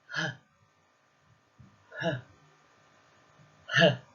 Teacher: Now we have the deep back of the tongue and the throat. So the H sound is created by constricting the area at the very back of the mouth.